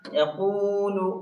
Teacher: یہاں صرف قاف کو لانگ کرنا ہے، اس لیے کہ واو ساکن سے پہلے ضمہ آیا یعنی پیش آیا ہے، اور رولس ہے کہ واو ساکن سے پہلے پیش ہو تو واو مدہ ہوگا، واو مدہ کو ایک الف کے برابر کھینچ کر پڑھنا ہے